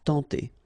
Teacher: when you get this E-N together, you get the nasal sound en